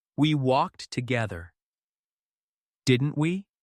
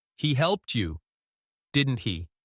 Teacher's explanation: That rising intonation tells listeners you're asking, not telling.